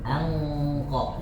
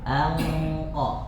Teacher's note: Jadi nun sukun, ya nun sukun kita masukkan ke dalam huruf qaf, maka dia akan melewati aliran hidung, ya. Jadi melewati jalur di hidung. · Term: Ikhfa